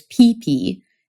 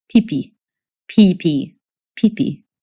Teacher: For both of these consonants, the difference between English and Hungarian is all about that puff of air.